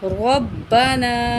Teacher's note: نون کے اوپر بڑی مد ہے تو چار الف کے برابر کھینچ کے پڑھیں گے